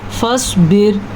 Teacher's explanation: فصبر سواد پر اور را باریک